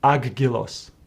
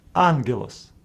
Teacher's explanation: if Any of these letters follow Gamma this first Gamma is pronounced as n